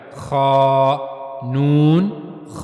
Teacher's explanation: इसको पढ़ते हुए आवाज को पुर रखा जाए मोटा रखा जाए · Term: पुर आवाज